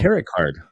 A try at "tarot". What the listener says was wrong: Tarot. It's tarot. The T is silent. I know, but we only pronounce one of the two T's.